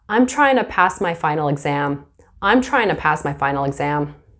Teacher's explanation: instead of saying trying to, you'll hear tryna.